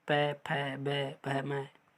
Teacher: ओष्ठ व्यंजन, यहाँ ओष्ठ मिलते हैं